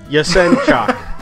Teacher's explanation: accents on the second syllable